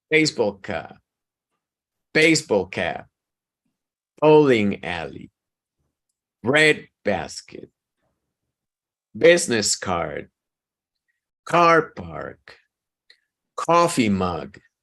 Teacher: for all of these you need to emphasize the first word